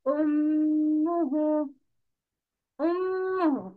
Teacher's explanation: Meme has the sound of shadda with dhamma, making nasal sound with two b's because it's meme.